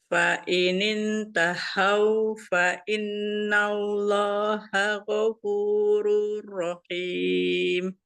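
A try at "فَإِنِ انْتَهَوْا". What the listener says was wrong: Tak masih seperti masih seperti yang tengah ya, bukan tahau tapi tahau turun lagi kan. Yang H besar itu ya, yang H-nya nanti tertukar. Saya soalnya dengarnya seperti Umi itu dari yang seperti yang di bagian tengah, yang H kecilnya, karena beda.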